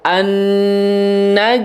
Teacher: ada nun tasydid ya. Nun tasydidnya di situ dibaca gunnah ya.